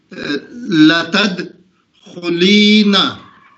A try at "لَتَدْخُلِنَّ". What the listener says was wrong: خلی اتنا لمبا کیوں کھینچ دیا آپ نے؟ یہ خلی کیوں ہو گیا؟ نہیں آپ کھینچ کیوں رہے اس کو؟ لام پہ زیر ہوگا نا، صرف یا کی آواز کھینچ کیوں رہے اس کو؟ تد نہیں ہوگا، تد تو مجہول ہو جائے گا.